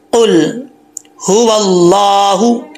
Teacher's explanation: ये हा भारी आवाज़ में पढ़ा जाएगा, इसको बरीक आवाज़ में नहीं पढ़ेंगे